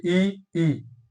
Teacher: ई और ई जो है ये तालव्य है ये तालू से बोले जाते हैं